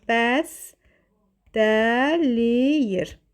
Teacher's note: T D-ya keçir, ə saitinə keçibdir